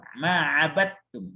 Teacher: dimasukkan dalnya ke ta sehingga dalnya enggak bunyi. Sehingga seolah-olah hanya ta saja yang ada di situ. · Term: diidghamkan